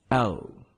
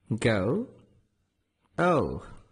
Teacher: the lips are always rounded while pronouncing but the end of the o vowel the tongue moves up a little bit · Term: diphthong